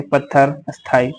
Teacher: दो महाप्राण व्यंजनों का उच्चारण एक साथ नहीं होता है, इसलिए उनके संयोग से पूर्ण वर्ण अल्प प्राण की तरह रहता है, जैसे पत्थर, स्थाई आदि।